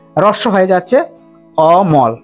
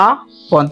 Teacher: অমল যখন বলবো হ্রস্ব হয়ে যাচ্ছে অমল, কিন্তু আপন যখন বলবো আপন তখন অটা দীর্ঘ হয়ে যাচ্ছে